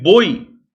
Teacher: o som da vogal é maior que o som da semivogal então o som do o é maior que o som do I Então o ditongo decresce